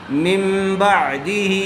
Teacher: اقلاب کا قاعدہ ہوگا، اس لیے کہ نون ساکن کے بعد با آیا ہوا ہے، غنہ کے ساتھ اخفا کر کے پڑھیں گے